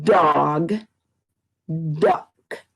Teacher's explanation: can you feel your tongue up behind your teeth and then when it finishes the sound it comes back down to its resting place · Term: sound of d